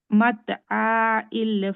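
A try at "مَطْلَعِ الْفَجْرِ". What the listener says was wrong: মাতলাই হুম মাতলা লাম আলিফ তো হবে না, তাই না? আলিফের উপরে ফাথা হয় না, আর এটা হামজাও না।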